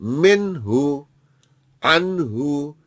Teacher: नून को जाहिर कर देंगे। गुना नहीं करेंगे।